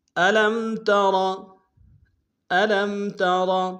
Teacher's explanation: الم میں لام کو میم ساکن کے سامنے لانا، میم ساکن میں غنہ کریں گے. · ترا میں را کو موٹا ادا کریں گے.